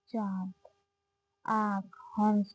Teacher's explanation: अनुनासिक उसे कहते हैं जिन वर्णों के उच्चारण में नाक वायु नाक एवं मुंह दोनों से निकलते हैं, उन्हें अनुनासिक कहते हैं।